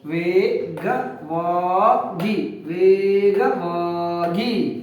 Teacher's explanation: ಎರಡು ಕಡೆ ದೀರ್ಘ ಸ್ವರಗಳು ಸೇರಿದಾವೆ ಹಾಗಾಗಿ ಅವನು ದೀರ್ಘ ಉಚ್ಚಾರಣೆ ಮಾಡಬೇಕು